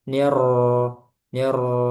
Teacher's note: cuma sedikit aja takrirnya. Eh, satu dua getaran ya